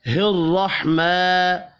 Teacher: الرحمن، را کو زبر کی وجہ سے پر پڑھیں گے، میم کے اوپر کھڑی زبر ہے، ایک الف کے برابر کھینچ کر پڑھنا ہے۔